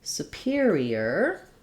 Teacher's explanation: Superior has stress on the peer syllable